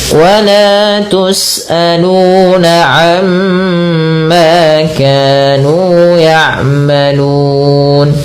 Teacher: Kemudian lafal wala tus'aluna amma, wala mad tabi'i 2 harakat, tus'aluna mad tabi'i, kemudian amma ada bacaan gunnah sama sebagai umma, ditahan suara mimnya, ma mad tabi'i juga.